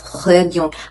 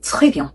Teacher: I have to make sure the R goes to my throat.